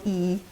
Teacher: your tongue is quite High near the roof of your mouth and quite far forward so it's high and far forward that's kind of how this